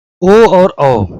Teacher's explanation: कंठ तालब्य ए और ए, यानी कि तालु से भी और कंठ से भी ए और ए बोले जाते हैं। कंठोष्ठ यानी कि ओठ से भी और कंठ से भी, ओ और औ